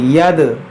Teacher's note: دیکھیے دال, جب بھی دال ساکن ہو تو اس میں قلقلہ کریں گے, یعنی اس میں تھوڑا آواز لوٹے گی. ید, یا دال زبر ید, ید.